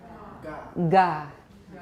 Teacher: Right, I made the voicing pretty strong. This is a fully voiced initial stop.